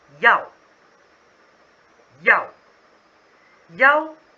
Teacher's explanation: The word is yao. Y ao fourth tone.